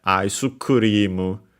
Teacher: By the way, the u in aisukurimu is the u for su is barely heard, if at all, because it's between unvoiced consonants.